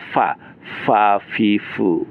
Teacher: bertemu bibir bawah dengan gigi atas